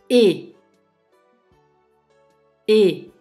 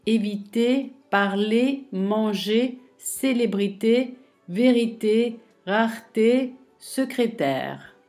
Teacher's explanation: Le son E se prononce avec la bouche presque fermée et les lèvres écartées.